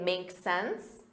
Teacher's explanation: you can simply shorten that and say, makes sense, with a rising intonation